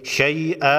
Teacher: اموالہم ولا اولادہم من اللہ شیئا، آگے وقف مطلق کی علامت ہے، وقف کریں گے 2 زبر سے اس زبر کو ختم کر کے 1 الف کے مقدار کھینچ کر پڑھیں گے